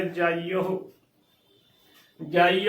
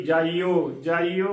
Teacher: ਮੁਕਤਾ ਵੀ ਤੇ ਔਕੜ ਵੀ ਲਘੂ ਮਾਤਰਾ ਨੇ ਸੋ ਇਹਨਾਂ ਨੂੰ ਬਹੁਤ ਹੀ ਘੱਟ ਉਚਾਰਨ ਕਰਨਾ ਹੈ ਕਿਵੇਂ ਕਰਨਾ ਹੈ ਜਾਈਹ ਜਾਈਹ ਉਚਾਰਨ ਕਰਨਾ ਹੈ ਨਾ ਕਿ ਜਾਈਓ